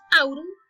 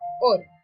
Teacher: el diptongo AU pasó a O en castellano